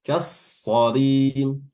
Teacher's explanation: lamnya sebelum huruf shad itu tidak kebaca